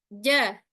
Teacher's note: jim kita taruh ke tengah lidah tanpa adanya gerakan syafatan, gerakan bibir